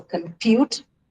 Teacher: So, this is how the word compute which is a verb and it's a dyelic verb is going to be written. Uh it has its stress on the second syllable